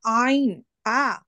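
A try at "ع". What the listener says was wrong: আইন দরকার নাই, আপনি শুধু আ উচ্চারণ করেন। প্রথমে আটা ঠিক আছে, তারপরে আইনের উপরে ধাক্কা খাবে, আ।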